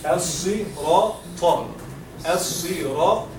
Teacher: صاد and ta, they are مفخم, which is the heavy letters